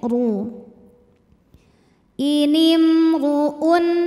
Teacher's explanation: huruf Dho dibunyikan secara tafkhim karena Dho berbaris damah maka dibacanya tebal pangkal lidah naik